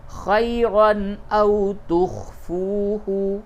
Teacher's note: ان تبدو خیرا او تخفوہ، تنوین کے بعد حمزہ ہے، اس جگہ پہ اظہار ہوگا